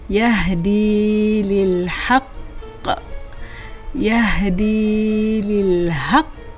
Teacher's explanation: qalqalah akbar ni perlu tebalkan bunyi detakan tu kuat